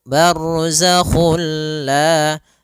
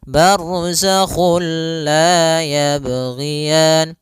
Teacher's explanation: kita memasukkannya secara utuh, secara seluruhan kepada huruf lam, sehingga tidak menyisakan sedikit daripada bunyi huruf nunnya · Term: idgham bila gunnah